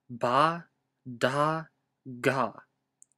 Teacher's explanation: Yeah, I didn't know this was possible until recently, when I realized that there's this weird fourth way to say these sounds where basically you start vocalizing while you're building up pressure, then you release it and breathe out quickly a little bit without vocalizing, and then you start vocalizing again when the vowel starts. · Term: vocalized aspirated consonants